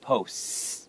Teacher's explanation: when there's a plural sound for P-O-S-T, the T can actually kind of become a little bit silent, so it's posts, like that.